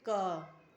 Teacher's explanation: ज्यादा जोर नहीं लगाना पड़ा। और आपकी जो मुंह से हवा निकली वो कम निकली। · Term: अल्पप्राण